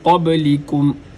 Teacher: با حروف قلقلہ میں سے ہے، لہٰذا اس کو ادا کرتے ہوئے قلقلہ کیا جائے گا۔ قبلکم، یہاں پر کاف باریک ہے، اس کو پڑھتے ہوئے کاف کو ادا کرتے ہوئے اپنی زبان کے درمیانی حصے کو تالو والے سخت حصے پہ لگایا جائے گا۔